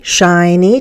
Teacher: Two syllables. First one is stressed.